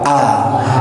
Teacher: a itu dikeluarkan dengan suara yang jelas tanpa dibarengi dengan udara udara dan baca huruf A itu enggak boleh dibaca O karena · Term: huruf hamzah